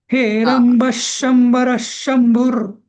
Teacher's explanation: विसर्गाचा double श म्हणायचा